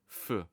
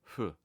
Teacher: English F which is made by putting your top teeth on your bottom lip or labio dentally. So it's not f but f.